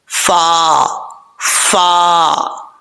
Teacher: اوپر والے دانتوں کا کنارہ نیچے والے ہونٹ کی تری والی جگہ پہ لگے گا تو فا پڑھا جائے گا. فا کو پڑھتے وقت ہونٹ بالکل بھی گول نہیں کرنے, فا فا, اس طریقے سے فا پڑھا جائے گا. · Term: فا کا مخرج